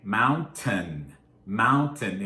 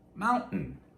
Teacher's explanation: because of a combination of stress and fast speaking the t, that t sound, often turns into the uhn-uh the glottal stop